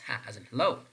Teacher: This is voiceless glottal fricative. It means that when you're producing ha, less vibration is perceived, and this is glottal because the glottis is involved in the production of the sound ha.